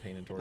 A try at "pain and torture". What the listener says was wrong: You said that British. didn't even roll your R.